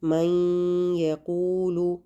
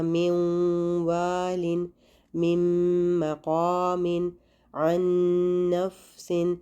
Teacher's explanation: ہمیں غنہ کی آواز آ رہی ہے، تو اس میں ہم نے 2 کاؤنٹس یا 2 حرکت کے برابر غنہ کرنا ہوتا ہے۔ کب، جب نون ساکن یا تنوین کے بعد یومن میں سے کوئی حرف آ جائے۔ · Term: ادغام مع الغنہ